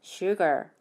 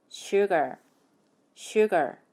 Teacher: 첫 번째 모음인 U의 강세가 있어요. 그런데 R로 끝나기 때문에 혀끝을 입천장에 닿지 않게 뒤로 말아 올리셔야 돼요. 그렇게 해서 sugar 이렇게 발음하시면 돼요.